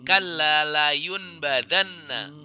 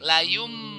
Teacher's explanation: Nunnya udah jadi mim ya. Di atas ba itu ada, atau di atas nunnya itu jadi ada baris mim, ada huruf mim ya. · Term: iklab